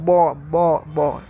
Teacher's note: में आया क्यों हट से बोलते हैं होट से बोलते हैं ब होट से बोलते हैं